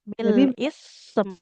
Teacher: Kalau mau wakaf di sini enggak boleh bil isim. Sanya jangan jadi kasrah ya kan sukun.